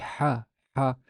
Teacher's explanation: the voiceless pharyngeal fricative the letter ha